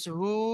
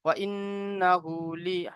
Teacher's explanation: হার উপরে উল্টা পেশ একালি পরিমাণ টান দিয়ে পড়বে, উল্টা পেশ অমাতার সমতুল্য হয়।